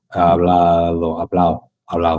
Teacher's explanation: en la boca o el Bueno, es verdad, pero para ciertas consonantes no es así tampoco, porque la mayoría del de los sonidos de la D, la B, la G, la G, pero son la D, son muy suaves, e como hablado que la D, esa D entre vocales casi se pierde